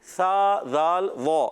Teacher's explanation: سا کا مخرج زبان کا سرا اوپر کے دانتوں کے کنارے